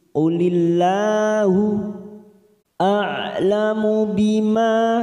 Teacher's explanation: lam jalalah yang didahului kasroh kita baca tarqiq tipis